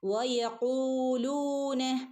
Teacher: വ പറയുമ്പോൾ ചുണ്ട് സർക്കിളാക്കിക്കൊണ്ട് പറയണം കേട്ടോ, വട്ടത്തിൽ.